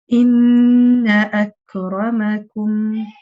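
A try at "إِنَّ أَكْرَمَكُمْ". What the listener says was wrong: Your ra can be a little heavier. Inna akramakum.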